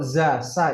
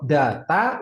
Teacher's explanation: Da, ta, juga sama ujung lidah depan, cuman bedanya kalau za, sa itu udaranya masih bisa ngalir. Kalau da, ta, udara ketahan, nggak bisa ngalir kalau nggak ada vokalnya.